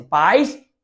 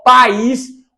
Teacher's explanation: Pais, o I nem aparece. Agora a palavra país, perceba, ó, país, o A é forte, o I é forte. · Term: hiato